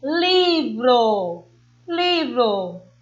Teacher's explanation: palavras paroxítonas porque a sílaba tônica é a penúltima